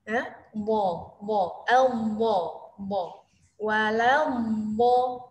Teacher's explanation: Dia huruf yang keluar dari sisi lidah, bertemu dengan gigi geraham. Sisi lidah sini, kiri kanan, atau salah satunya bertemu dengan gigi geraham atas. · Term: huruf bot